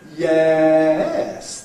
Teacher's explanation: if I start loud in the middle, yes, then go up and down, that's a rise fall. So it's to do with the dynamics of this, as well as with the actual shape.